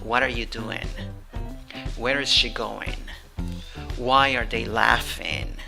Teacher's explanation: And the intonation is not rising, it's falling.